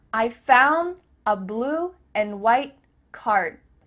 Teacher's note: the word and is being reduced just cut off that final d sound